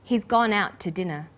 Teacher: the final t sound in out is held slightly longer